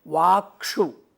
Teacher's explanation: क होने की वजह से सुप का जो स है वो मूर्धन्य हो जाएगा, और जैसे ही वो मूर्धन्य हुआ तो क और मूर्धन्य श के संयोग से क्ष बन जाता है, वाक्षु।